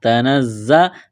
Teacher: تا زبر تا، نون زا زبر نز، زا زبر زا، تنزا، زا میں سیٹی کی آواز پیدا کریں گے